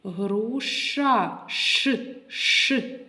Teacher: так приголосний чуємо твердо значить приголосний твердий звук